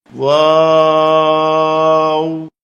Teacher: এই হরফটি 4 আলিফ পরিমাণ লম্বা করে বলতে হবে। 2 ঠোঁট গোল করে শুরু হবে, 2 ঠোঁট গোল হয়ে শেষ হবে, মাঝে কিছু টাইম মুখ খুলে থাকবে